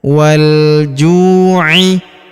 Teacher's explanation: Huruf ju kita panjangkan dua harakat karena wau sukun di depannya.